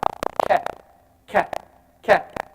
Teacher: Then, right above it is the kaf. The back of the tongue is touching the hard palate, the upper hard palate.